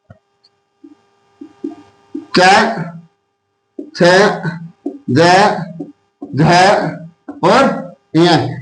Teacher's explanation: तालव्य, यानी जो कंठ और दांत के बीच का जो हिस्सा है